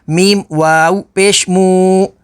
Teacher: واو ساکن سے پہلے پیش ہے تو واو مدہ ہوگی